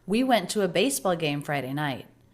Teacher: One sentence, one thought group. Every word next to the next word with no break. Linked smooth.